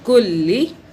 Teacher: لام کی دو بار آواز، ایک لام کی آواز سائلنٹ دوسری زیر کے ساتھ